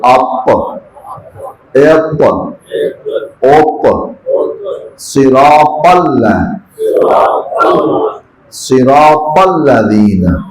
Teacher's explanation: بہرحال تو طا جو ہے یہ زبان کا اگلا حصہ، نو کے زبان سے پیچھے والا، زبان کا فرنٹ. یہ زبان کا فرنٹ اگلے والے دانتوں کے اندر اوپر مسوڑے سے زبان کا اگلا حصہ لگے تو طا ادا ہوتا ہے